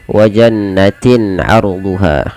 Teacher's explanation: tanwinnya dibaca dengan jelas, tidak boleh penahanan. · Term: idhar halqi